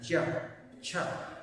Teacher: दांत के ठीक पीछे वाला जो भाग जिसको हमने क्या कहा, तालु, ठीक है। तो इसीलिए ये तालव्य व्यंजन है